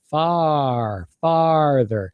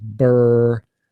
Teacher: my mouth is opening for that R far farther but for the ear sound my mouth is not open much at all